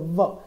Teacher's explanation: એને આપણે સમજવું હોય તો થોડીક પ્રયત્ન એ રીતે કરીશું કે જેથી કરીને વ ઉપરનો દાંત અને ઉપરના દાંત અને નીચેનો ઓઠ આ બંને મળી અને બોલાય છે વ, એટલે એને દંતોષ્ઠ કહેવાય છે. દાંત અને ઓષ્ઠ બંને ભેગા મળીને બોલાતું હોવાને કારણે એ દંતોષ્ઠ વ્યંજન છે.